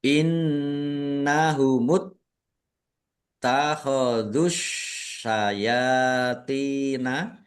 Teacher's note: nun tasdid dibaca ghunah atau mendengung. Ditahan biar tampak mendengung. Innahumut t-nya ada tasdidnya dibaca dobel ditekan dan ditahan.